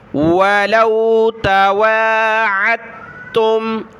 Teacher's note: عین کو ملانا ہے تا کے ساتھ، تا کو میم کے ساتھ، دال کو نہیں پڑھنا۔